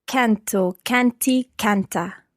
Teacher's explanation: Just watch the stress of canto, canti, canta. The stress on the first syllable there.